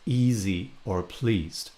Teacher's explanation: I produce what is called a high front vowel E. Linguists also call this vowel the fleece vowel.